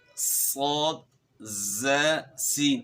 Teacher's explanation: سیٹی کی مثل آواز اس میں پیدا ہوگی